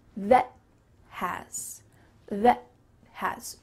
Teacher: instead of making that T sound with a puff of air, your tongue is going to stop at the top of your mouth. · You're making a T sound. You're just not letting that puff of air escape. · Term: stopped T